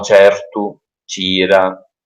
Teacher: Quindi, ad esempio, nel palermitano C seguito da E è pronunciato certu o ciettu, ciettu, con questa sh, diciamo, sh abbastanza lieve. Eh, In alcuni dialetti però rimane c, perché sh fondamentalmente è un'evoluzione del suono c, è una semplificazione del suono c.